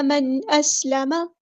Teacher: نون ساکن کی آواز کو ہم یہاں پہ ظاہر کریں گے. من اسلم اظہار ہو رہا ہے.